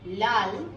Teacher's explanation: এই দুই পাশ দিয়ে বাতাস বেরিয়ে গিয়ে এই পার্শ্বিক ধ্বনিটি উচ্চারিত হয়। তাহলে ল হচ্ছে পার্শ্বিক ধ্বনি, ল হচ্ছে পার্শ্বিক ধ্বনি। · ল যখন উচ্চারিত হয় তখন স্বরতন্ত্র কম্পিত হয়, এজন্য লকে ঘোষধ্বনি হিসেবে চিহ্নিত করা হয়। এই ধ্বনিটি যখন উচ্চারিত হয় তখন বাতাসের বেগ বা গতি কম ছিল, এজন্য সেটাকে অল্প প্রাণ ধ্বনি হিসেবে চিহ্নিত করা হয়।